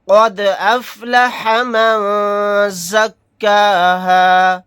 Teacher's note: یہاں پر دال ساکن ہے تو یہاں پر ہم قلقلہ کر کے پڑھیں گے